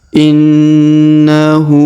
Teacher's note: huruf na ditahan dan ditekan 2-3 harokat karena di atasnya terdapat tanda tasdid